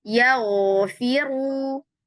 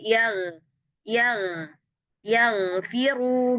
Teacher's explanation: Rata sifat isti'lanya, terangkat pangkal lidahnya dari awal sampai akhir.